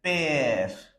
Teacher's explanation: Last E will not be pronounced, and this E will be pronounced for a longer period. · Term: accent grave